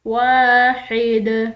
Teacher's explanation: الہ واحد، یہاں پر یہ جیم چھوٹا سا یہ وقف جائز کی علامت ہے، تو جہاں پر وقف جائز کی علامت ہو وہاں ٹھہرنا بہتر ہے، تو ہم اس دال کو وقف کے ساتھ یعنی ٹھہراؤ کے ساتھ پڑھیں گے۔ الہ واحد، دال حروف قلقلہ میں سے اس کو ہلاتے ہوئے چھوڑیں گے